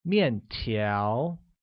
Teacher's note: uses a falling tone on the first A and a mid-rising tone on the second